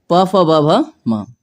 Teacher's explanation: ओष्ठ वर्ण कहते हैं, क्योंकि इनका जब उच्चारण करते हैं तो दोनों होठ आपस में स्पर्श करते हैं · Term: ओष वर्ण